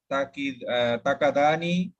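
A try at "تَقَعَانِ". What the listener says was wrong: তাকাআনি, আইন তো আইন, তাকাআনি,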